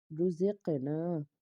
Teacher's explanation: زا کے بعد قاف ہے، قاف حرف مستعلیہ کا حرف پر پڑھنا ہے، اور اس کے علاوہ قاف کے اوپر جزم ہونے کی وجہ سے ہم قلقلہ کریں گے کیونکہ یہ حرف قلقلہ کا حرف بھی ہے۔